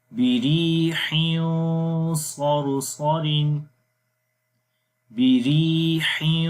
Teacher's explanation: آواز ناک کے اندر چھپ رہی ہے اور غنہ بھی موٹا ہو رہا